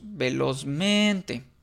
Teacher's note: es una palabra grave porque la tónica recae en men